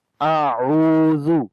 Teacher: حمزہ کو حمزہ پڑھیں گے، تو جب الف کے اوپر زبر زیر پیش آ جائے تو اس کو حمزہ بولتے ہیں، تو یہ حمزہ ہے جس کو آ پڑھیں گے حمزہ کی آواز کے ساتھ، اور اس کے بعد عین ہے، عین کو گلے کے درمیان والے حصے سے پڑھیں گے۔ اعوذ، تو کوشش کرنی ہے کہ دونوں کی جو آواز ہے وہ مختلف کر کے پڑھیں۔